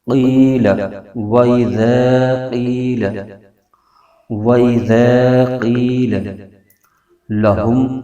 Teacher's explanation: وَإِذَا، اور آگے قوف حروف مستعلیہ کا حرف ہے، اس کو موٹا کر کے پڑھیں گے۔ اور آگے یا ساکن ہے، اس سے پہلے زیر ہے، تو یا مدہ ہو رہا ہے، تو اس کو ایک الف کھینچ کے پڑھیں گے